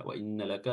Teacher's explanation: nun tasydid di sini memiliki sifat gunnah, ya, ditahan.